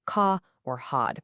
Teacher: They drop the R before consonants and at the ends of words, saying ca or hod. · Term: non-rhotic